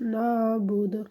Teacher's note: جب آپ وقف کریں گے تو دال میں آپ نے قلقلہ کرنا ہے